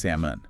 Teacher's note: The L is completely silent.